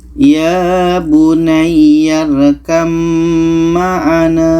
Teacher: 42 ini maka di sini ada ba bertemu mim maka bunyi ba ini terus kita masukkan ke mim Oke bunyi ba ini tidak kita baca lagi kita baca ya bunaram maana Ba ini kita tidak baca lagi